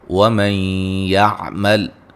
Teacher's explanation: نون ساکن کا ادغام مع الغنہ ہے